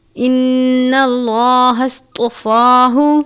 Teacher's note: صاد کو سین کی طرح نہیں پڑھنا بلکہ پر کر کے پڑھنا ہے۔ ان اللہ اصطفاہ، طوا کو بھی پر پڑھتے ہیں، فا کے اوپر کھڑی زبر ہے، الف کے جتنا پڑھیں گے۔